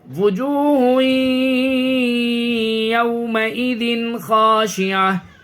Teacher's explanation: یہاں پہ اظہار کرنا ہے، تنوین کے بعد حروف حلقی کے 6 حرفوں میں سے خا ہے۔